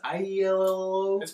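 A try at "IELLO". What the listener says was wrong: It's pronounced yellow. It's pronounced yellow, even though it's an I. The I is silent, and the Y is non-existent, but there.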